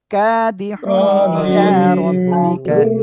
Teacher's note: তানবিনের পরে ইজারের অক্ষরে হামজা আসছে, স্পষ্ট করে পড়বেন।